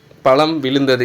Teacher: மகர மெய் வந்து தனதுக்குரிய அரை மாத்திரையிலிருந்து கால் மாத்திரை அளவாக ஒலிக்கும் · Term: மகரக் குறுக்கம்